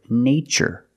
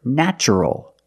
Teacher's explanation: In this spelling pattern T is pronounced with the CH sound like chicken